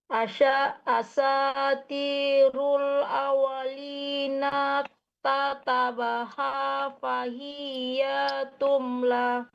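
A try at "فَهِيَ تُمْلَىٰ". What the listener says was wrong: Fahiyah pendek fahiyatumla. Hati-hati mande ya untuk menggabungkan antara kata ke kata.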